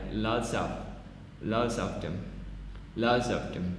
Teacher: loss of V in of before consonant